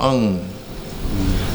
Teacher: ડ જેવું લખેલું હોય ને, ડ જેવું, અને એના ઉપર મીંડું હોય તો ડંગ નહીં બોલવાનું, પણ અંગ. અનુનાસિક સ્વર કહેવાય ને, નાકમાંથી અવાજ કાઢીને બોલવાનું, અંગ. તો એ સ્વર છે.